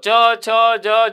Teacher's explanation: તમે બોલો ચ, છ, જ, જ, તમારી જીભ તાળવાને સ્પર્શ કરતી હશે. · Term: તાલવ્ય